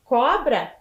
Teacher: cobra termina em a e a sílaba tônica é o có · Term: paroxítona